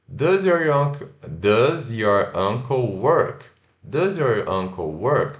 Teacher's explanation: No finalzinho você levanta a entonação, né? A entonação vai para cima. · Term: entonação para perguntas